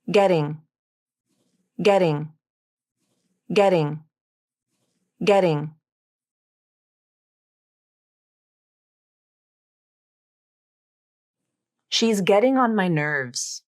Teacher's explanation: listen to me pronounce the word or sentence using the flap te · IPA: /ɾ/